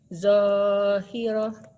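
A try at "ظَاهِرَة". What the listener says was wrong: Zohiroh. Jangan. Zohiroh. Jangan ada haknya Bu ujungnya. Jangan ada haknya.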